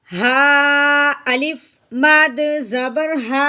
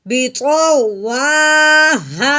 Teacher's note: اب اس مد کے بعد حمزہ آ گیا ہے، درمیان میں کوئی کلمہ نہیں ہے، کوئی حرف نہیں ہے بلکہ صرف وقف ہے، لیکن حمزہ مد کے فوراً بعد آیا ہے جس کی وجہ سے اس مد کو ہم نے 4 الف کے برابر لمبا کرنا ہے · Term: مد منفصل